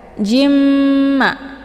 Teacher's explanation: bertasdid di lain kalimat ini dinamakan dengan Idgham bunah cara bacanya tanwinnya langsung dimasukkan ke dalam huruf mim ataupun dileburkan dengan cara ditekan kemudian ditahan lebih kurang dua harakat